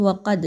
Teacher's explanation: افتطمعون ان یؤمنوا لکم وقد کان فریق منہم، اس میں دیکھیے تو وقد، یہاں پہ دال کو تھوڑا سا ہلا کر پڑھا جائے گا